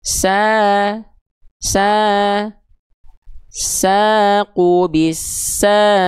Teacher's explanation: huruf berharakat fathah bertegur sapa sama alif dibaca dengan kadar panjang dua harakat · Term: mad thobi'i